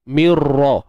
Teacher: masukkan nun tu dalam ra tapi tanpa dengung. Tapi tanpa tanpa dengung. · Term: idgham bila gunnah